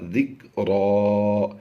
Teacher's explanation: 2 زبر کی تنوین کو وقف کی وجہ سے ہم نے ایک زبر کے ساتھ بدل دیا، یہ بن جائے گا ذکرا۔